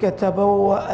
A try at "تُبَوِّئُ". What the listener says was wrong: بم حرف التاء تبوئ